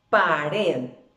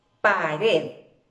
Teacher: cada una de estas palabras se convierten en palabras agudas porque su fuerza de voz recae sobre la última sílaba